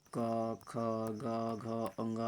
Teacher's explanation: ये हमारा कंठ से बोला जाता है